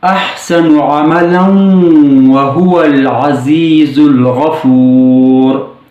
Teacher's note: ہم نے واو کو مشدد بنایا اور وصل یعنی ملا کر پڑھا